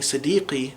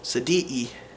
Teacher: word that has qaf, it's pronounced with an epiglottal stop